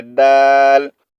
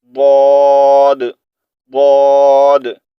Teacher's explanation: अच्छा, यहाँ पर दाल और द्वाद का साउंड भी आपस में मिलता जुलता है, लेकिन दाल को हमने सॉफ्ट पढ़ना है और द्वाद को हमने मोटा पढ़ना है